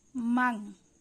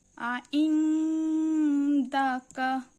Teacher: এই মিম নুন পড়ার সময় নুনটিকে সম্পূর্ণরূপে উচ্চারণ না করে অনুস্বারের মত করে উঠতে হয়। মাং মানটা মাং মাং এর মতন শোনা যায়।